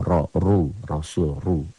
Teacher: Ro-nya dibaca tebal, tabkhim bunyi o, ro. Apabila dia berbaris fathah atau dhammah.